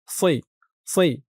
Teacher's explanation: আন্না হাযা সিরাতি র এখানে দেখুন একেবারে সি বলা যাবে না, সি বললে কিন্তু সিনের উচ্চারণ হয়ে যাবে, বলতে হবে সই